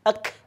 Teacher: Jadi kalau kalimat kaf itu disukunkan, jadinya ada keluar nafas, ya. Ek. Bukan ek, bukan.